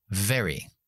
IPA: veri